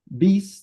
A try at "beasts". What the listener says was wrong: The S is, not beats, but beasts.